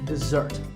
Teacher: the first syllable is de and the second starts with a z sound. We stress the second syllable